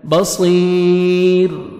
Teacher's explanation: را ساکن اس سے پہلے آپ نے یا دیکھنا ہے، تو را کو آپ نے بری کرنا ہے